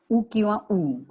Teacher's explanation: उ किंवा उ, ह्रस्व किंवा दीर्घ यांचा स्वच्छ खणखणीत उच्चार होतो. उ, ओठ आपले तसे हालतात, चंबू होतो ओठांचा.